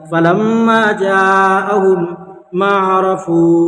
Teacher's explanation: फलम्मा जाअहुम मा अरफू, ये इदगाम शफ़वी हो जाएगा। यहाँ पर मीम साकिन के बाद मीम है, इसलिए मीम को मीम से मिलाकर गुन्ना के साथ पढ़ेंगे